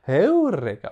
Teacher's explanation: cet accent sur le U est un accent aigu qu'on devait prononcer comme une quinte, c'est-à-dire à peu près l'intervalle entre un Do et un Sol · La voix monte, puis redescend. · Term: accent de hauteur